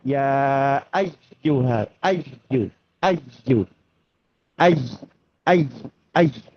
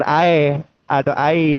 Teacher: Ya ayyuha di sini ya tasdid ya. Ya tasdid itu usahakan tekan untuk huruf ya-nya.